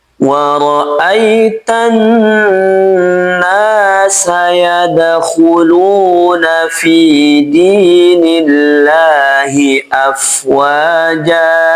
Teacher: Dal sukun di sini dibaca qalqalah sugra. Qalqalahnya kecil, memantulnya kecil.